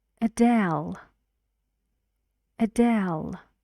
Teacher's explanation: two syllables and the stress is on the second